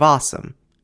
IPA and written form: ˈɑ.səm (Assam)